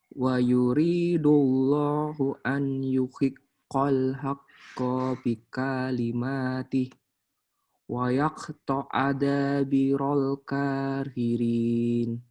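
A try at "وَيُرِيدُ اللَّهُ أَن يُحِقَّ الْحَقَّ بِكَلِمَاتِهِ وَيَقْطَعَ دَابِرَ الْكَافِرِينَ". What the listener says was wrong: Yang perlu sering-sering latihan, ini kof tadi. Kofnya masih masuk ke kaf ya. Memang sih kalau kof sama kaf itu memang saudaraan, tetanggaan. Jadi jangan sampai pleset ke tetangga yang lain ya.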